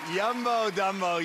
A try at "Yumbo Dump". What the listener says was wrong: It's not Dumbo. It's not Dumbo, it's Dump.